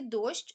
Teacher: рисочкою далі звук о голосний наголошений він один позначаємо кружечком і остання буква щ позначає два звуки ш і ч звук ш приголосний твердий позначається однією рисочкою а звук ч також